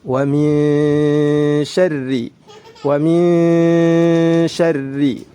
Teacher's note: Nun sukun bertemu dengan shin, ya ikhfa hakiki harus dibaca dengan samar dan ditahan 2 harokat.